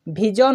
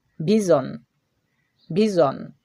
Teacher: দন্তস তালবস আর একটা বর্গীয় জ বা ঝ এর মাঝামাঝি সাউন্ড বর্গীয় জ উচ্চারণ করাও যাবে না আবার ঝটাও উচ্চারণ করা যাবে না এদের মাঝের উচ্চারণটা আমাদেরকে করে একটা ঝংকার সৃষ্টি করতে হবে